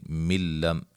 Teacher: نون تنوین کا ادغام بلا غنہ، غنہ نہیں کریں گے